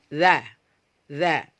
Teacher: Maka jangan dikeluarkan udaranya jadi kita tes seperti ini dza dza tidak keluar udaranya itu berarti sudah benar sifat huruf jaharnya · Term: sifat jahar